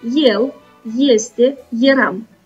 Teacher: Aceste cuvinte ilustrează situația când o singură literă, adică E, corespunde unui diftong. Noi spunem el, este, eram și nu el, este și eram.